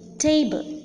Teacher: the first syllable is more prominent than the second syllable hence the first syllable is known as the stressed or the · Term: accented syllable